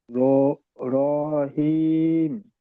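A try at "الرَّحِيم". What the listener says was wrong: আরো একটু বেশি টান দিতে হবে, 3 থেকে 4 আলিফ। রহিম।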